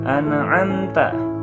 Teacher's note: An'amta ada mim mati menghadapi huruf ta ya, itu izhar syafawi ya, dibaca jelas